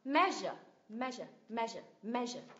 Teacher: Nhấn vào tiếng thứ nhất, me, me. Âm thứ hai là schwa sound.